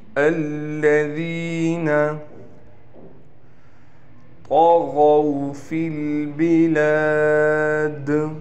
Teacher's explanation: طا کو ہم یہاں موٹا کر کے پڑھیں گے، غین بھی اس کے ساتھ موٹا کر کے پڑھا جائے گا